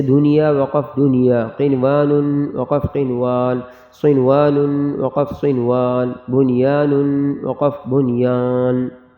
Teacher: ان چاروں کلمات میں غنہ نہیں کریں گے بلکہ اظہار کریں گے، نون ظاہر کریں گے